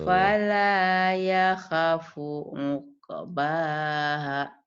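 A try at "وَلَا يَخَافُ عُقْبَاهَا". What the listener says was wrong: Bukan pala kok, Bu. Coba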